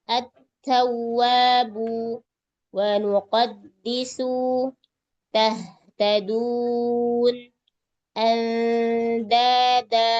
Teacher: huruf th, dal, dan ta keluarnya dari ujung lidah beserta punggungnya dengan pangkal gigi seri atas